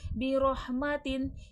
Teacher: तनवीन के बाद हुर्फ़ हल्की का हा इजहार हल्की होगा, बगैर गुन्ना के पढ़ा जाएगा